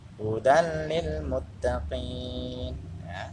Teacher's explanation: memasukkan huruf ya salah satu huruf dengan tidak mendengung